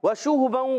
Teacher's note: ادغام مال غنہ۔ وشوہباً، واو کی ادائیگی ہونٹوں کی گولائی سے، شین پر پیش، ہا پر پیش، ہونٹ گول ہو جائیں گے، اور حرکات ہے، حرکات کو کھینچنا نہیں، 2 زبر کی تنوین کو الف سے بدل دیں گے، کہیں گے واو بالابدال، الف، واو بالابدال، مع الالف۔